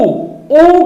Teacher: उ बोलने में आप देखि होठ गोल हो जा रहा है